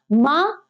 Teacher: मां ओष्ठ है और सघोष है, बिल्कुल सही है